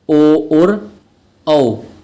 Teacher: जिसमें कंठ और ओष्ठों का सहारा लेना पड़े वो होते हैं हमारे कंठ ओष्ठ